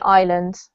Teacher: we don't pronounce the S. So it's as if it's not there. So it's island, as if you have the word I plus land.